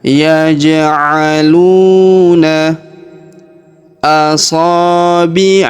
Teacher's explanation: Huruf lu kita panjangkan 2 harokat karena waw sukun di depannya.